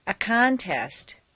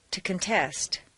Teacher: change the stress from the first syllable for nouns to the second syllable for verbs. This is a regular, consistent change.